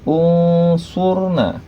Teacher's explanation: maka nun matinya menjadi dengung, menjadi samar dan didengungkan, yaitu unsurna. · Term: ikhfa